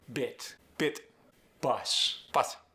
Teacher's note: Short vowels stay short. No American stretch.